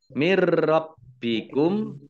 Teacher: nun sukun bertemu dengan huruf ro bacaan idghom bilagunnah masuk dengan tidak mendengung masuk ke rupek ditandai roknya ada tasydidnya kemudian baknya juga dibaca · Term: idgham bila gunnah